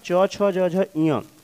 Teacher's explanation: च वर्ग का मतलब च छ ज झ ञ, इनका भी उच्चार स्थान तालु होता है